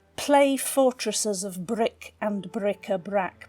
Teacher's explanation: you've got these plosive B's and the harsh C sounds and CK sounds. Just give this sort of hostility and harshness to the lines that suggest that it's a battle.